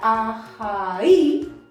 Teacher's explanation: la palabra ajaí lleva su carga de voz en la i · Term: vocal tónica